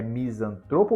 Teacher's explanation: A palavra misantropo deve ser pronunciada como uma palavra paroxítona, na qual a sílaba tônica recai na penúltima sílaba, tro.